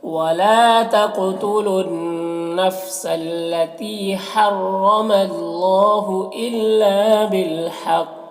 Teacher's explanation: बिल हक़ यहाँ पर कौफ को पुर पढ़ेंगे और वक्फ की सूरत में कौफ में कलकला भी होगा